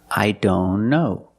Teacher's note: If you link the sounds, I don't know. Link the N with the other N.